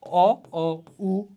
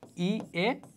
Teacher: অ, উ, এগুলো হচ্ছে গোলাকৃতি, ই, এ, এগুলা অগোলাকৃত